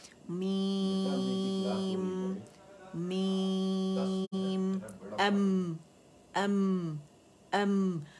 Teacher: मीम जो है ये भी सॉफ्ट लेटर है और दोनों होंठों के खुश्क हिस्सों से अदा होता है